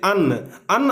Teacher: अन्न आप लोग बोल रहे हैं तो देख रहे हैं कि हल्का नाक का भी यूज हो रहा है और मुंह का भी, यानी कि नाक और मुंह दोनों मिल करके बोलाता है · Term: नासिक्य वर्ण